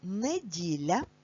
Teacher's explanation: Н твердий приголосний, дь - м'який, ль - м'який.